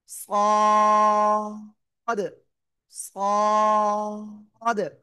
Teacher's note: জিহ্বার আগা সামনে নিচে দুই দাতের পেটও আগার সাথে লাগাব লাগিয়ে আমাদের একটু মোটা আওয়াজে উচ্চারণ করতে হবে।